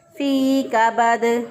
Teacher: ساکن ہو جائے گا، تو پھر اس پہ قلقلہ ہوگا کیونکہ ساکن حالت میں دال پر قلقلہ کیا جاتا ہے